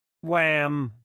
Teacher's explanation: I rounded my lips and my tongue stayed sleeping on the bottom